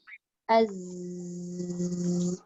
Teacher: Sofir ni maksudnya berdesir. Dia berdesir kuat yang menyerupai suara binatang. · Meletakkan kita punya lidah di gigi bawah. Baru dia akan bunyi berdesir.